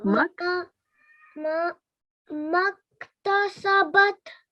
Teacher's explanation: the alif is blank, so we don't pronounce that. We go straight to kaf.